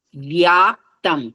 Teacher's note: వ కింద యకారం వస్తే ఎప్పుడైనా సంయుక్తక్షరాలు యకారం స్పష్టంగా వినిపించాలి.